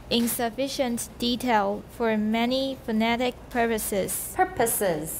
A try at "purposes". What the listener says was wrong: Purposes. Don't be sloppy with the P's. The T's do funny things, but the P's behave themselves. So watch the P's.